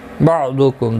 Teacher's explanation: ضاد حروف مستعلیہ ہے، پر پڑھا جائے گا۔ میم ساکن کے بعد دوسرا میم آیا ہے، ادغام شفوی ہوگا، غنہ کے ساتھ پڑھیں گے۔